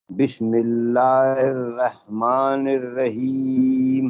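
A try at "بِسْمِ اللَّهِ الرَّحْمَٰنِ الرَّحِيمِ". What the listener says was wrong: اچھا آپ نے پڑھا بسم اللہ رہ جو ہے یہ اردو انداز ہے، رہ نے بسم اللہ الرحمن الرحیم.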